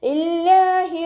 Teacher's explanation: അവ്വ എന്നുള്ള നാമത്തിൻ്റെ മുന്നേയുള്ള അക്ഷരത്തിന് കെസ്റ വന്നു. അവ്വ എന്നുള്ള നാമത്തിലെ ലാമിനെ ലൈറ്റാക്കിയിട്ട് ഉച്ചരിക്കുക, താഴ്ത്തി ഉച്ചരിക്കുക